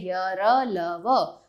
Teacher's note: इन व्यंजनों का उच्चारण स्वर तथा व्यंजन के मध्य का सा होता है। उच्चारण के समय जीवा मुख के किसी भाग को स्पर्श नहीं करती। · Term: अंतस्थ व्यंजन